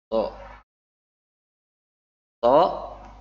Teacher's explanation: So. So dibaca ujung lidah berada di antara dua gigi seri, memiliki sifat syafir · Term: sofir